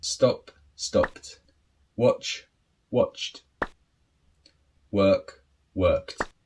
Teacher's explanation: now with these unvoiced consonants this is where you have the t sound